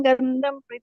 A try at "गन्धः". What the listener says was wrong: ಪುಣ್ಯೋ ಮಾತಾಜಲ್ಲಿ ಪುಣ್ಯಂ ಅಲ್ಲ, ಪುಣ್ಯೋ ಪುಣ್ಯೋ ಗಂಧಃ ಮಾತಾಜಿ, ಅದು ಗಂಧಂ ಅಲ್ಲ, ಗಂಧಃ.